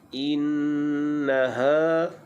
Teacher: ha makhrajnya di pangkal kerongkong.